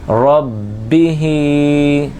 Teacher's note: ربی، را با زبر رب، با زیر بی ربی، ہا کھڑی زیر ہی ربی ہی، را کو پر بھی پڑھیں گے، با میں جمع والا قلقلہ کریں گے اور ہا کے نیچے کھڑی زیر ہے، اس کو ایک الف کے برابر کھینچ کر پڑھیں گے۔ حرکات میں اور کھڑی حرکات میں فرق یہی ہے کہ حرکات کو بغیر کھینچے، ربی ہا کو کھینچیں گے کیونکہ اس کے نیچے کھڑی حرکات ہے۔